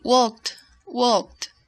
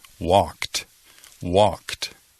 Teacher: Es como si hay una T al fin en lugar de ed.